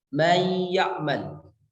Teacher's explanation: Ada nun mati bertemu dengan ya. Kemudian nun matinya dibaca gunnah. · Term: idgham